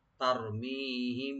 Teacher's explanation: তা ওপেন রাখবেন, রা একটু মোটা হবে, মি এখানে টানবেন, এখানে মিম সাকিনের পর যেহেতু বাড়ছে এখানে একপা স্বভাবই হবে, মিম একটু গুণা হবে।